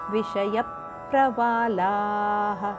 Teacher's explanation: ಮುಂದೆ ಪ್ರಮತುರದ ಜೋಡಕ್ಷರಗಳು ಸಂಯುಕ್ತ ಅಕ್ಷರ ಆದ್ದರಿಂದ ಮೊದಲ ಅಕ್ಷರದ ಒತ್ತುಕೊಡಬೇಕು ವಿಷಯ ಪ್ರವಾಲಾಹ ಲ ದೀರ್ಘ ಮತ್ತು ವಿಸರ್ಗ ಇದೆ ದೀರ್ಘದ ನಂತರ ವಿಸರ್ಗದ ಉಚ್ಚಾರಣೆ ಮಾಡಬೇಕು